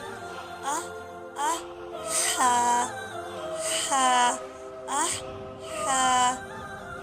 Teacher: हा जो सा है, हा वो हलक से अदा होता है। हा जो सा है वो अदा होगा हलक के दरमियानी हिस्से से।